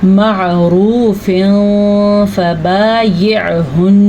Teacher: معروف فبایعہن، آگے جو آپ کو نظر آ رہے ہیں تنوین کے بعد حروف اخفاء میں سے فا آیا ہوا ہے، تو یہاں پہ اخفاء کا قاعدہ ہوگا